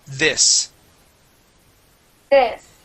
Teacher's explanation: instead of saying these we want to use a short I